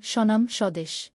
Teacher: বফলার উচ্চারণ। শব্দের শুরুতে বফলা যুক্ত হলে সাধারণত বফলার উচ্চারণ হয় না